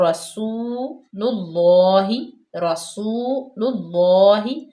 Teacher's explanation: واو ساکن ما قبل مضموم یعنی کہ پیش ہے تو واو مدہ ہوگی، اس کو لمبا کریں گے جتنا ہم ایک کھڑی زیر کو لمبا کرتے ہیں یا الٹے پیش کو لمبا کرتے ہیں، اور رسول اللہ، رسول اللہ، اللہ کی لام سے پہلے پیش آ گیا تب بھی اللہ کی لام پر پڑی جائے گی۔